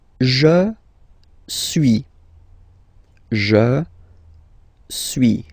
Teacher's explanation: suis, as you've been noticing, you don't pronounce the final S